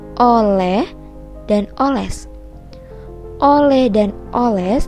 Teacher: merupakan suku kata tertutup lantaran setelah kata oh terdapat konsonan yang menghalanginya sehingga dibacanya menjadi tidak lepas